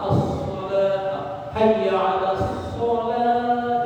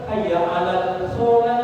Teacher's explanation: Jadi ada kadang saya mendengar hayya 'alal shalah ada. Nah kalau hayya 'alas shalah itu lamnya, alif lamnya itu tidak dibaca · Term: Asyamsiyah